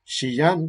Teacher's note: Es decir, solamente hay fricción, no hay oclusión. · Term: plenamente fricativo